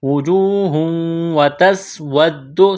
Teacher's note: سین میں سیٹی کی آواز پیدا کریں گے، ود دال میں سختی کریں گے، وجوہ واو مدہ ہے، ایک الف کے برابر کھینچنا ہے، یہاں وقف کریں گے، ہا کو ساکن کریں گے۔